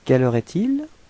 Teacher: as it's a question, it would be better to raise your voice at the end of the sentence, so it would sound like quelle heure est-il?